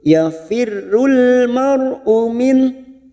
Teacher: ra sukun yang didahului fathah, kita baca tafkhim